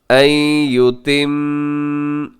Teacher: मीम मुशद्दद पे गुन्ना कीजिएगा, और गुन्ना करते हुए इसको आगे रा के साथ भी मिला दीजिएगा।